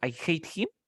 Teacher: Cuando veas el him, no me pronuncies la H.